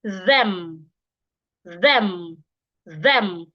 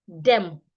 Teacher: word like them like it's a d that is there no it's not a d it's th so you must put your tongue outside